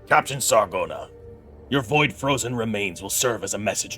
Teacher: the TH sounds, some of them he does as THs, and some he does as kind of a more D sound